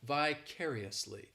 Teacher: The stress is on that 2nd syllable. · That 3rd syllable, it's like that letter I just has that E sound, and the 4th syllable has the schwa